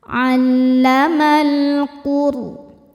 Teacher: Ro sukun dibaca secara tafkhim karena sebelum ro sukun ada huruf dengan harokat dhammah, maka ro-nya dibaca tebal.